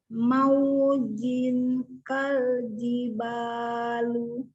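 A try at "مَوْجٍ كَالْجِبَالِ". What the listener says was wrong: Oh, lu-nya nggak usah dibaca. Maujin kaljibal. Coba.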